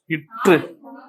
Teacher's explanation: மேல்வாயை நாவின் நுனி மிகவும் பொருந்துவதால் தோன்றுகிறது